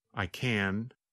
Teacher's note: When we say the positive form, we pronounce the letter N longer. The N sound, n, n, n, lasts longer than in the negative form.